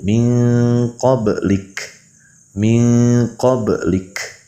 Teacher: Huruf kaf di situ ada hams sifatnya